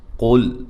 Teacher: قاف کو موٹا، لام کو باریک